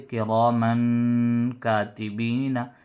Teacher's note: یہاں پر بھی میم پر دو تنوین ہیں، میم پر تنوین ہے دو زبر کی، تو تنوین کے بعد حروف اخفا میں سے کاف آیا تو نون کی جو آواز نکل رہی ہے تنوین میں اس کو ناک میں چھپا کر پڑھیں گے